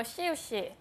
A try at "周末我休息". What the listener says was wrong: 근데 발음하실 때요. 시우 아니고요. 시오시. 시오시. 맞아요. 시오시. 소만이는 오 발음을 해주셔야 돼요. 周末我休息. 周末我休息.